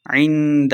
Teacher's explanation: عند اخفا کا قاعدہ ہو رہا ہے، غنہ کر کے پڑھیں گے